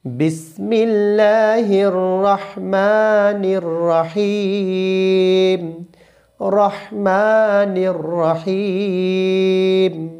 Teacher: তো এখানে রয়েছে বড় হা, একটু চিকন করে বলতে হবে, রহমানির রহিম, রহমানির রহিম। রহমা এক লিপ টান রয়েছে এবং রহিম 3 লিপ টান রয়েছে।